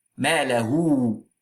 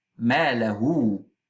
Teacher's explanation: So this wow means that here we have a mad al-sila. Be careful that you need to add a wow, and this wow is sakin.